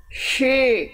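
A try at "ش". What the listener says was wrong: Nah, itu kan shi ya. Bunyinya beda antara shi dengan sli. Tafasyi itu menyebar udara berlebihan dari huruf shin. Menyebar udara dari mulut. Bukan, jadi bukan shod, tapi sli. Coba sli. Enggak, jangan di show, enggak. Bukan shi, bukan. SI.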